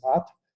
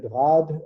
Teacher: when it's in word final position it appears as rat so you get rad you lose the voicing of the final D of the stem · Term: domain final devoicing